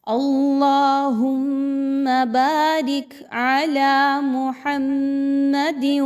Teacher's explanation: علی لام پر کھڑا زبر 2 حرکات کے برابر لمبا کریں گے. محمد، میم مشدد اور دال پر 2 زیر کی تنوین کے بعد حرف واو آ رہا ہے جو کہ ادغام کے بارے میں بتا رہا ہے کہ یہاں پہ ادغام ود غنہ ہوگا.